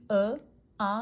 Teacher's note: जैसे कि अ आ का उच्चारण कहां से होता है? कंठ से।